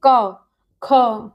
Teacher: voice कहाँ से निकल रही, जो साउंड है वो कहाँ से निकल रही, हमारे कंठ से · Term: का वर्ग